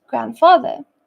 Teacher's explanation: the D in grandfather links smoothly to the F in Father there is no pause